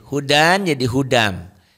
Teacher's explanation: Karena tanwin ketemu mim maka bunyinya seperti ada tasdid, dan karena mimnya bertasdid itu termasuk biguna, dengung ada dengungnya kayak gunahnya. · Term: idgham bi gunnah